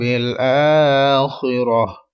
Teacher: اور گولتا دیکھیں چھوٹا ایک تو بھی آ رہا ہے ادھر, تو اس کا مطلب ہمیں وقف کرنا ہے, یہاں پر رکنا ہے, سانس لینا ہے یہاں پر رک کر. اور جو گولتا ہوتی ہے وہ اگر آخری حرف ہو اور آپ نے وقف کرنا ہے تو یہ پھر ہا ساکن بن جائے گی